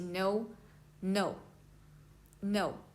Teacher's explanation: Is a falling tone. It starts high and drops sharply. So when you pronounce this this tone is like in English you say no. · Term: fourth tone